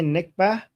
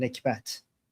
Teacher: in Arabic they say nikbah, but we Iranians pronounce the t at the end, nikbat.